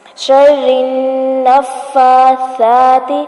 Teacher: سا ہے نرمی سے پڑھا جائے گا، اس میں سیٹی کی آواز نہیں آئے گی ، نفاسات ہی نہیں بنانا ورنہ یہ سین بن جائے گا